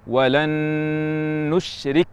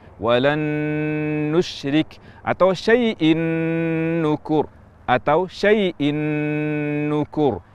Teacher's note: Gunnah ini adalah gunnahnya nun kedua, bukan nun yang pertama. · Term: idgham kamil